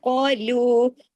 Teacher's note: یہاں پر heavy letter کے ساتھ ہے، موٹے حرف کے ساتھ ہے، یہاں الف کی آواز بھی موٹی ہو جائے گی، او ایسی ہو جائے گی، اور آگے لو باریک ہو جائے گا. موٹے حروف ادا کرنے کے لیے آپ کی زبان اوپر اٹھے گی، منہ بھر کے آپ پڑھیں گے.